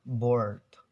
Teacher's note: In American, they pronounce the R sound, bored. So we can actually hear the R sounds, but in British accents, they will usually avoid to pronounce the R.